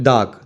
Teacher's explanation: But when we pronounce, we call it dark. The R sound is not very, very strong and not prominent. It is very subtle, very mild.